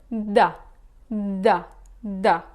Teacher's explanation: you are using the tip of your tongue touching the top of your teeth to pronounce the letter da